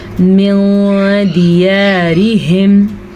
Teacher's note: نون ساکن کے بعد دال ہے جو کہ حروف اخفاء میں سے ہے تو ہم نون ساکن کو چھپے ہوئے غنے کے ساتھ پڑھیں گے